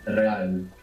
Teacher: When we have an R at the beginning, you might hear it like a rolling R.